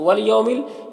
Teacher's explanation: یہاں پر واو لین سے نرم آواز کے ساتھ جلد پڑھیں گے اور یہ الف کو نہیں پڑھنا ہے۔